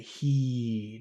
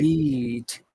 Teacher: heed that e is very big especially because of the D at the end of the word